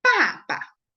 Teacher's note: The second one will be more soft and light, right? The listening you hear that will be more soft and light. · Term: neutral tongue